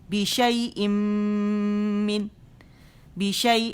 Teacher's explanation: حرف غنہ مشدد ہے نا تو اسے 2 سے 2.5 کاؤنٹ یا 3 تک چلا جاتا ہے